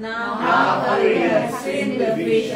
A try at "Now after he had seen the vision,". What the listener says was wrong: Saya stop. Intonasinya salah. Kalau baca now.